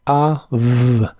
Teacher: se pronuncia como AV, con un sonido A y un sonido labiodental y vibrante de la V.